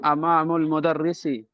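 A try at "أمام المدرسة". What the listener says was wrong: امامو نہیں ہے، وہ امامہ ہے، دیکھ کے مدرسی نہیں لکھا ہوا ہے، دیکھ کے پڑھیے غور سے کیا لکھا ہوا ہے.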